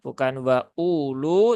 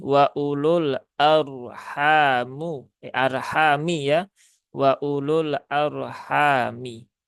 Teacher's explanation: wawunya di sini tidak terbaca sehingga ya unya pendek ya, bukan wa ulu tetapi wa ulul arhamu, arhami ya, wa ulul arhami.